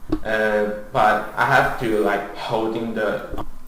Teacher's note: he's talking quite mechanically. It's like none of the words flow into each other.